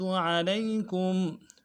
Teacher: لام کو یا کے ساتھ ملانا ہے، یا لین بغیر کھینچے پڑیں گے